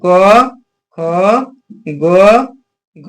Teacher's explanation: ख का उच्चार स्थान क्या है कंठ